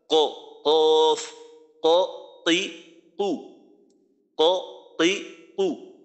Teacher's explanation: জিহ্বার গোড়া সোজাসুজি উপরের যে ছাদটা ওই ছাদের সাথে লাগাইয়া উচ্চারণ করতে হবে